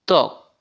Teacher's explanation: ব বর্ণের সাধারণ উচ্চারণ ব, তবে ফলা হিসাবে এই বর্ণের উচ্চারণের স্বাতন্ত্র্য আছে। শব্দের আদিতে ব ফলা উচ্চারণ হয় না, যেমন ত্বক।